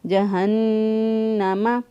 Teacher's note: نون مشدد پر ہمیشہ گنہ ہوتا ہے ، لہذا یہاں پر گنہ کرتے ہوئے اس کو ادا کیا،